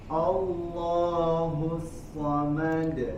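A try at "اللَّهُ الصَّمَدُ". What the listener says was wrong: A tipis. Allahus kemudian sodnya lebih tebal. Allahus samad, dari so ke mimnya langsung.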